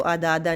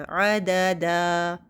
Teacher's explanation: पहला दाल सिर्फ एक हरकत, दूसरा दो हरकत हो जाएगा।